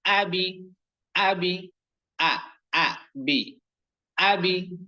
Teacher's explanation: হামজা অক্ষর হলকের প্রথম থেকে শক্ত করে পড়তে হয়